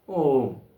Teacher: ഓം എന്ന് ചൊല്ലിയാൽ അത് മൂന്ന് മാത്രയാകും · വാസ്തവത്തിൽ അത് തെറ്റാണെന്നേ പറയാൻ പറ്റുള്ളൂ. കാരണം 3 മാത്ര കൊണ്ട് തീരേണ്ടതാണ് ഓം എന്ന മന്ത്രത്തിൻ്റെ ഉച്ചാരണം. 3 മാത്ര എടുക്കുമ്പോൾ അത്രയും സമയം ആകില്ല.